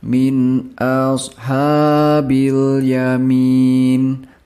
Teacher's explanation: nun sukun bertemu dengan huruf alif. Ini adalah bacaan Izhar. Jadi, harus dibaca dengan saksama